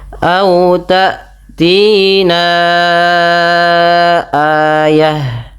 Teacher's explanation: Panjangkan bunyi suara na sepanjang empat atau lima harakat. Karena pada lafal ini terdapat hukum tajwid berupa bacaan mad jaiz munfasil.